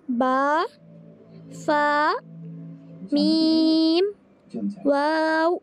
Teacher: آپ نے غور کیا، با ہونٹ لگ رہے ہیں، فا میں بھی ہونٹ لگ رہے ہیں، فا، میم، واو، یہ تمام حروف ہونٹوں سے ادا ہو رہے ہیں۔ ان میں دانتوں کا، حلق کا یہ زیادہ کنیکشن نہیں ہے۔ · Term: ہونٹوں سے ادا ہونے والے حروف